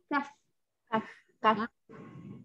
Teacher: jika kita berhenti akan ada hamas pada kaf